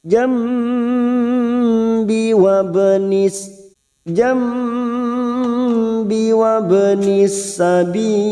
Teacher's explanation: Haibibil jam, nun sukun bertemu ba, namanya bacaan iklab, siap masuk pada huruf ba, dan kita dengungkan seperti membalik pada huruf mim, tetapi kita siap membunyikan huruf ba. Jam kita dengungkan dan ditahan selama 3 harakat.